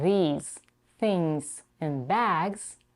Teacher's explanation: in these things and bags the last sound is the voice Z although it's spelled with an S